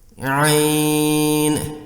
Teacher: اس یا لین کے بعد نون ساکن ہے یعنی سکون اصلی ہے، قاعدہ کے بموجب اس یا لین پر مد لین لازم 6 حرکات لمبی کرنی ہوگی